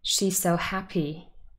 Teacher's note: to stress it more than happy she's so happy why because if you stress happy more your sentence sounds unfinished listen she's so happy it sounds like there should be something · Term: emphatic stress